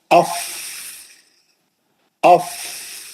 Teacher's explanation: نیچے کا ہونٹ اور سامنے کے اوپر دانت، اور پیچھے سے جو آپ ہوا سے پریشر ماریں گے وہ پریشر کا جو ہے کیا ہوا کے پریشر سے وہ فا ادا ہوگا۔ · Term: فا کا مخرج